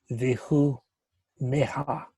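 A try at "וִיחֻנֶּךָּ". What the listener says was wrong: Vihu nekka. That kuf on the end has a dagesh in it, and then there's a ah. So it's just like having like this. Ka. Vihu nekka. Okay, vihu nekka.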